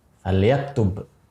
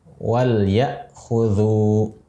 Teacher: Tapi terkait dengan cara bacanya izhar, dibaca jelas lamnya sukun.